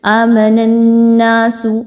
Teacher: آمن الناس، نون کو نون سے ملائیں گے، نون مشدد ہے، نون زبر الف نا، 2 الف کے برابر اس کو لمبا کر کے پڑھیں گے، نون مشدد پر غنہ کرتے ہوئے۔